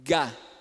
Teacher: Então, o Gá é o sonoro e o K é o surdo.